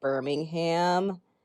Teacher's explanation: We actually pronounce the H here in the States.